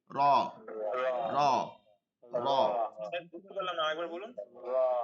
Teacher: এই ধরনের র, কোনো রতে ভাইব্রেশন হবে না। র পুর হবে, মোটা হবে, কিন্তু ভাইব্রেশন হবে না।